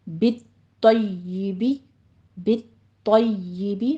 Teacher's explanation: طا کو پر پڑھیں گے، طا کے اوپر تشدید بھی ہے، سختی کرنی ہے، یا کے اوپر بھی تشدید ہے، یا کو آپ نے نرمی کے ساتھ آواز ادا کرنی ہے۔